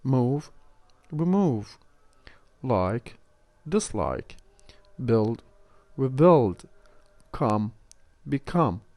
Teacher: When we add remove, re at the beginning, this prefix will not take the stress. The stress will be kept on the original word.